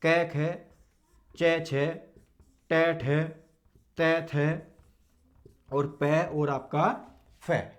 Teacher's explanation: वर्ग के आपके पहले दो वर्ण क्या हैं? आपके अघोष है, इनमें कंपन उत्पन्न नहीं हो रहा है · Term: अघोष वर्ण